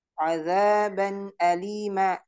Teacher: Jadi di nunnya itu dibaca jelas dibaca izhar nun sukunnya ya minun adzaban alima ya tidak boleh juga dibacaaban alima k tidak boleh karena ee tidak dibaca gunah tapi dibaca izhar.